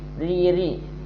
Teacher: Riri ada getaran cuman tipis